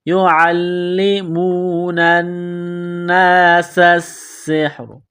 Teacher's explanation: نون کو نون کے ساتھ ملانا ہے، نون مشدد ہے، غنہ کریں گے، آواز ناک میں چھپائیں گے ، سین کو باریک کرنا ہے، سین میں سیٹی کی آواز